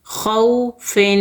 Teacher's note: فا 2 زیر فن، 2 زیر کی تنوین کو 2 حرکت غنّے کے ساتھ پڑھیں گے